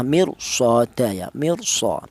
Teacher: maka cara bacanya ra mati itu dibaca tebal ya